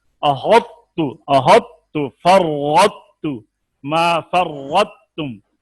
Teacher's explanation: طا کا تا میں ادغام، تو طا کی صفت تفخیم باقی ہے